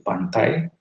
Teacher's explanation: seolah-olah i yang di ujung itu menghilang, ya, bahkan menjadi semivokoid berupa y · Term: diftong naik